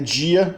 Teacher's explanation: a oclusiva alveolar sonora, que antes de i vira j